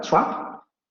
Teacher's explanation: trap se va a pronunciar con la vocal media abierta anterior no labializada